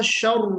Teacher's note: را تھوڑا سا اور باریک پڑھنا ہے نا، ترقیق کے ساتھ پڑھنا ہے، تفخیم نہیں ہونا چاہیے بالکل بھی